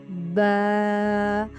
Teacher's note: با بند ہونٹوں کے گیلے حصے سے، ہونٹ بند ہو اور اس کے گیلے حصے سے۔